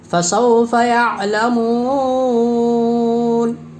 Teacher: حرف مد کے بعد سکون وقف کی وجہ سے ہے، اس لیے مد عارض وقفی ہوگا، اس میں طول، توسط، قصر تینوں جائز ہے، فسوف یعلمون۔